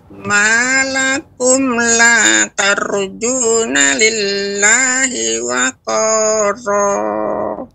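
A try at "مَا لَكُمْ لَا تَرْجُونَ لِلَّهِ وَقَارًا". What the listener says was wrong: Ya, tar dibaca dengan tebal. Malakum la tar.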